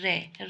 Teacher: जिनके उच्चारण में कंपन हो जिसमें कंपन होती है तो वो प्र कंपित होते हैं र र होती है ठीक है र बोलते हैं तो इसमें